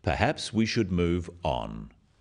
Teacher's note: this falling intonation makes it a more definite statement rather than a suggestion · The first one, "perhaps we should move on," is phrased as a suggestion, but it is said in a firm way with a falling intonation at the end